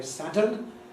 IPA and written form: ˡsædən (sadden)